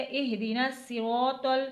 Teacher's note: تو کو بھی موٹا پڑھنا ہے، تو کو تا نہیں بنانا، اہدینا صراط نہیں پڑھنا۔